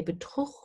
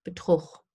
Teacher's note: And when you say Betrug, when you use the pre-uvular fricative, then the U sound gets shortened